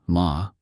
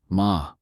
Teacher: the word ma can mean mother, ma, with a high tone, or horse, ma, with a rising tone